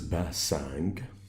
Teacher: We don't have the p sound, so we deal with the 2 letters in the same way. This name starts with p sound, Pasang, but it's actually pronounced as b in Arabic.